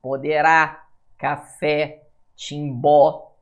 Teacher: Oxítona, a sílaba tônica é a última.